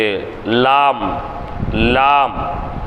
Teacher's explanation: நுனினாவை மேல்முரசின் முன்பாகத்தில் சேர்த்து உச்சரிப்பது